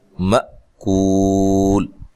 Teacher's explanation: یہاں حمزہ کو جھٹکے سے ادا کریں گے، م کاف کو باریک پڑھیں گے، کو و مدہ ہے تو وقف کی صورت میں مد کر سکتے ہیں، مأکول۔